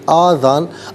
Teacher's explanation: آ کو ذرا سا کھینچ کر پڑھیں گے، آذان